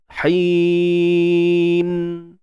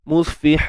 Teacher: Pastikan balik kepada makhraj nun lah. Jangan tutup bibir pula.